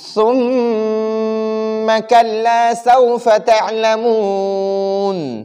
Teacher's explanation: ادھر میم مشدد ہے اور ہم نے پہلے قاعدہ پڑھا ہے کہ جب نون مشدد اور میم مشدد ہو، ان دو مشددوں پر ہم ہمیشہ غنہ کریں گے، ہمیشہ سے ان دونوں پر غنہ ہوگا. تو ادھر میم مشدد ہے اور سا کو باریک یعنی سا کو نرمی کے ساتھ پڑھیں گے